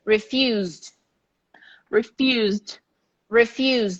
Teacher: Refuse, S, but pronounced like a Z.